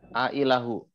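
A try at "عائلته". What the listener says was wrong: Ailah itu di belakangnya ada apa? Tak marbutoh. Tak marbutoh berarti kalau disambungkan tidak diwakafkan berarti harus kelihatan, harus nampak. Ailatuh.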